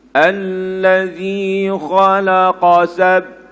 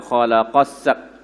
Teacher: Khalaqa, sab tu dia tak sambung.